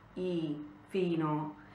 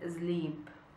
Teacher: viene letto come una I lunga, come per esempio quella presente nella parola italiana fino, I, fino. La ritroviamo per esempio nel termine inglese sleep.